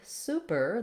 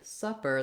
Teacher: super and supper both have the stress on the first syllable. So in the word super, the stress is on the su, and in the word supper, the stress is on the sa.